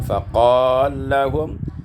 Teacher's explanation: Pada ayat yang ke-13, faqala lahum, idghamul lam fil lam, diidghamkan lam pada lam